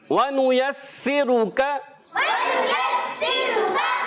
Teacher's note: تو حرکات جب بھی آتی ہیں یاد رکھیں بغیر کھینچے بغیر جھٹکا دیے معروف ادا کرتے ہیں۔ اس میں سین کی ادائیگی کلیئر رکھنی ہے، یعنی سیٹی کے ساتھ ادا کریں گے،